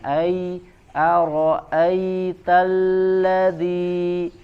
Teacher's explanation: ada Lin Ya Sukun sebelumnya fathah kita lembutkan suaranya